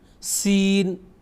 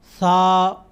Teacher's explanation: سین کی آواز میں سختی پائی جاتی ہے، اس کی آواز کے وقت سختی اور سیٹی سین. اور وہی سا کی جب آواز نکالنی ہو تو نرم سا.